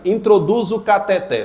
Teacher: a mais forte é o té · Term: oxítona